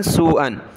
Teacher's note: مد ہے سین پر، واو کی طرف کھینچیں گے